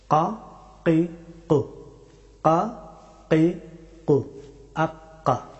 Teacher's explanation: কাফ হরফটি উচ্চারিত হয় একেবারে জিহ্বার একেবারে শেষের অংশ থেকে এবং উপরের তালু, এখান থেকে ছোট জিহ্বার কাছ থেকে কাফ হরফটি উচ্চারিত হয়।